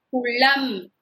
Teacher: நம்ம நாக்கு நடுப்பகுதி மேல் அன்னத்தின் நடுப்பகுதியை தொடணும்